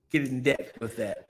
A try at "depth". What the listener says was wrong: There's a P in there.